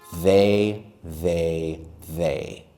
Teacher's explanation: Normally when I say they, my tongue comes out